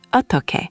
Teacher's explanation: The aspiration creates that strong t sound. · The heo combines with deo to make teo, so eotteoke.